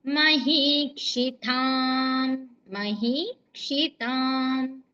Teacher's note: మహీక్షితాంలో హీకి దీర్ఘం ఉందండి క్షి తాం తాకి దీర్ఘము